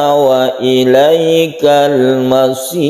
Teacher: Ada sukun ro sebelumnya kasroh, tipiskan membacanya, disebut ro tarqiq.